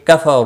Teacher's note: کفروا رو واو مدہ ہے، 1 الف کے برابر کھینچ کر پڑھیں گے۔ رو پیش کی وجہ سے پر پڑھا جائے گا، مد کے ساتھ ہی وقف ہوگا۔